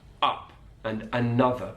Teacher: Cockney Multicultural London English it's an ah sound